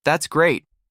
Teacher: When they finish a thought, the pitch drops. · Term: intonation